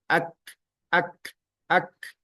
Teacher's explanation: ada seperti udara yang terlepas dari ee rongga mulut kita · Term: sifat Hames